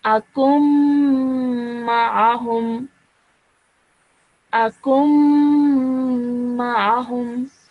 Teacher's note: Okay, so what happens over here is akumma akumma. Okay, so the sound of noon sakin is not really produced in this. Okay, straight away you join the kaf to the meme.